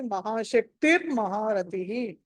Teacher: last లో మహాశక్తి మహారతిలో రెండు నామాలు అది మహా శక్తిహి మహారతిహి అని ఆ శక్తిర్ అన్నది విసర్గ స్థానంలో అక్కడ ర వస్తుంది ఎందుకంటే సంధి జరుగుతుంది